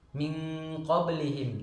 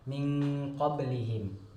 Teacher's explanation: Contoh ikhfa adalah apabila nun mati atau tanwin bertemu dengan huruf qaf, contoh min qablihim, min qablihim. Cara membacanya adalah disamar-samarkan antara izhar, antara jelas, dan gunnah dan dengung.